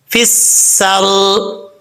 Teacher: اچھا، یہ سین کے اوپر کیونکہ شد ہے، اس لیے تھوڑا سا زور دے کے پڑھیں گے، مشدد حرف 2 دفعہ پڑھا جاتا ہے، فی، فا، سین زیر، فس، سین، را زبر، سر، سین سیٹی کے ساتھ پڑھا جائے گا کیونکہ حروف صفیرہ میں سے ہے